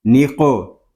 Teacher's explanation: نون قوف زیر نق، اس کو نک نہیں پڑھیں گے، قاف ساکن ہے، اس میں کلکلا خوب ظاہر کریں گے